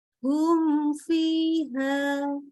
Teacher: Jangan disamakan dengan kalau ketemu ba ataupun ketemu mim. Mimnya kita baca jelas tanpa tambahin lagi gunnah. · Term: idhar